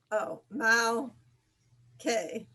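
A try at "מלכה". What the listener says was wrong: Yes, malche, perfect.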